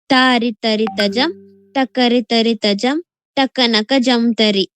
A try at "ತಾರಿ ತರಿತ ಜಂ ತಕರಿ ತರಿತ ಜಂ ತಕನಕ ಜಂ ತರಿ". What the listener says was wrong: ಒಂದ್ ಸ್ವಲ್ಪ extra gap ಬುಗಿಬೇಕು okay ತಾರಿ ತರಿತ ಜಂ ತರಿ ತರಿತ ಜಂ ತಕಣಕ ಜಂ ತರಿ